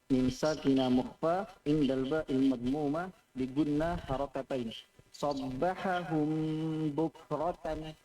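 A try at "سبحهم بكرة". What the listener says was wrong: Ahsantu.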